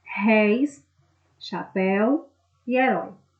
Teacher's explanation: a sílaba mais forte, a pronunciada com maior intensidade, é a última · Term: oxítonas